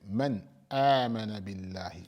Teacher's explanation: Make the nun clear with its sukun and move on without pausing, without prolonging it. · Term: idhar